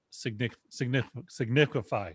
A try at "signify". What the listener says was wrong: I think you put the emphasis on the wrong syllable there.